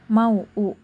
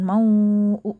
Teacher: Jadi maksudnya suruh dibaca dua harakat maksudnya adalah mau u gitu bacanya. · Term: qasar